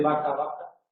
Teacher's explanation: La B y la V se pronuncian igual